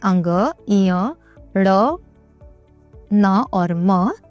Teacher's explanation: इनका उच्चारण अनुस्वार रूप में ही किया जाता है। इनका उच्चारण करते वक्त सांस नाक से निकलती है।